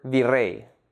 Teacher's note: The last syllable, rey, is the stressed syllable.